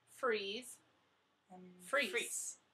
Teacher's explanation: And for freeze, we want to make sure that your vocal cords are vibrating and that your tongue is hitting that ridge behind your mouth